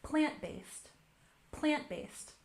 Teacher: We can stress the first syllable with a subtle stress on the second syllable.